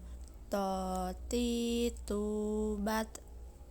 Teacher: Huruf ini keluar dengan menyentuhkan ujung lisan kita dengan tempat tumbuhnya 2 gigi seri bagian atas yang biasa disebut gusi. Perbedaan dengan huruf ta adalah to tidak mengalir napas dan diucapkan dengan suara menebal. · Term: huruf to